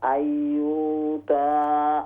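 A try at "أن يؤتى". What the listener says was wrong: यूता नहीं, हमजा है। अय्युता अय्युता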